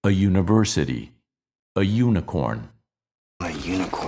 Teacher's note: spelled with an initial vowel but pronounced with a Y sound which we consider a consonant in that position